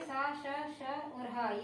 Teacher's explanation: ऊष्म व्यंजन वो होते हैं जिनको उच्चारण करने में गर्माहट महसूस हो, सुरसराहट महसूस हो, वो ऊष्म व्यंजन कहलाते हैं।